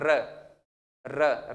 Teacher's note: जीभ में वाइब्रेशन पैदा हो जैसे र र र बोलकर देखिए पूरे व्यंजन में र ऐसा है जिसको बोलते समय एक विशेष प्रकार का वाइब्रेशन पैदा होता है